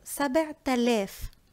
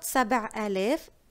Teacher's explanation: But when it's with آلاف, that means thousands, I assimilate the last letter from سبعة, which is the ت, with the أ at the beginning of ألف.